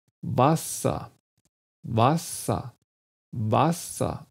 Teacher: am anfang habe ich ein schönes offenes a